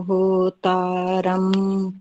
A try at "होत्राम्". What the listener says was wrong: होत्राम, होतारम नहीं, होत्राम है ना, त्र है, होत्राम।